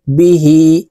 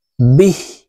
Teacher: ওয়াকফের ক্ষেত্রে হাকে সাকিন করে ফেলতে হবে